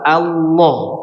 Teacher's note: Coba lamnya itu ditebalkan. Lamnya ditebalkan. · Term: lam tebal